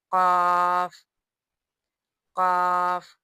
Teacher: ये काफ पुर पढ़ा जाएगा